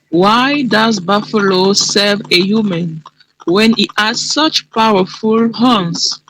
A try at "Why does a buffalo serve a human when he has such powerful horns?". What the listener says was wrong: Good, but only one sound missing in the beginning of your sentence. Listen again.